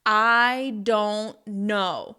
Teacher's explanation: when you stress each word of that sentence, you are basically showing annoyance and you’re making it really clear that you don’t know and somebody else might know.